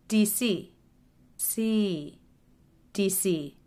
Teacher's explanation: stress is always on the last letter so that letter will be the longest and have the most shape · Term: stress is on the last syllable